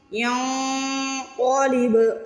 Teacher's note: کرتین ینقلب، یا کو نون سے ملانا ہے، ین پہ جو نون کی آواز آ رہی ہے اس کو ناک میں چھپانا ہے، اس کو اخوا کہتے ہیں۔ ینقلب، قاف کو موٹا پڑھنا ہے اور با پہ قلقلہ کرنا ہے، با کو ہلا کے ادا کرنا ہے۔